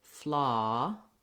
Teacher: the ah which is unrounded and the most open